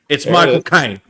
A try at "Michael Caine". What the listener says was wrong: No. You're not saying it. How he talks. He talks in the back of the nose. It's all up in the nose. It is.